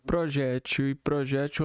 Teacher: Pode ser dizer projétil com acento na segunda sílaba ou projétil com acentuação na última sílaba